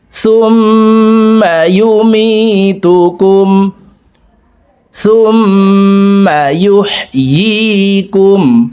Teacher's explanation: তাসদিদওয়ালা মিমের সাথে 3 সেকেন্ড পরিমাণ গুন্নাহ করে পড়ব · ইয়ার উচ্চারণ জিহ্বার মধ্যখান থেকে পড়তে হবে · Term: ওয়াজিব গুন্না